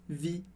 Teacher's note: em vie, esse E não é pronunciado